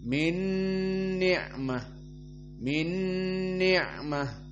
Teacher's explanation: Udghiman nun awal yang sakinah kepada nun yang kedua mutaharrikah dengan kasrah. Maka dimasukkan nun kepada nun jadi idgham. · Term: idgham kamil